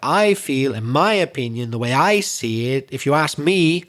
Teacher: we always stress either the word I or my